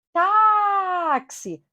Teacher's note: observem aí que a sílaba tônica é o tá